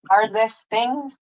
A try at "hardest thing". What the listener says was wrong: So the TH was fine. You had it tongue between your teeth thing, but you forgot to say the H. Hardest thing.